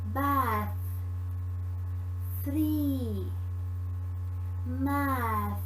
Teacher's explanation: made by touching the tongue to the upper teeth english has a voiceless dental fricative